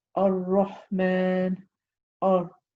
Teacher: it's the trilling of the tongue when pronouncing the letter Ra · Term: taqreer